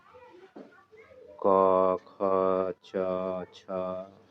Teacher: इसमें स्वर यंत्र जो है वाइब्रेशन नहीं कर रहा है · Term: अघोष वर्ण